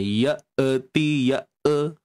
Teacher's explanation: Hamzah yang sukun di sini. Kita perlu matikan hamzah dalam keadaan yang kita kata sharp lah. Okey, tanpa ada lebihan suara.